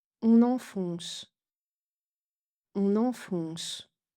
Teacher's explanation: avec une liaison en N qui peut compliquer la perception des 2 voyelles nasales